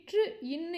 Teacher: மேல்வாயை நாக்கின் நுனி மிகவும் பொருந்துவதால் பிறக்கும் எழுத்துக்கள்